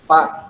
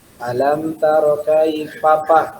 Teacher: Biasanya kalau orang yang pedalaman ya, yang di desa, fa itu berat, jadi pa.